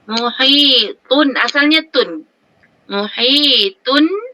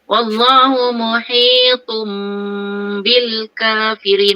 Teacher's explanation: tanwin tun sebenarnya diganti dengan mim, kita tukarkan masuk kepada itu kan, menukarkan iklab tu, menukarkan sebutan kepada mim.